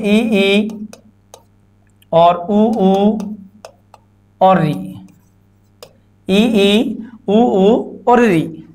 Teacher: ऐसी ध्वनियां जिनके उच्चारण में हमारा मुख बिल्कुल कम खुलता है या न के बराबर खुलता है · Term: संवृत स्वर